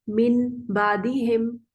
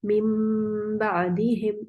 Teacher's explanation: तो इन्होंने इस वजह से यहाँ पे एक छोटा मीम लिखा होता है कि असल में तो ये नून ही है लेकिन पढ़ने में मीम आ रहा है, इसलिए छोटा करके लिखते हैं। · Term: बदलना